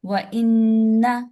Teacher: نون کو جلدی چھوڑنا ہے، اس کو الف نہیں بنانا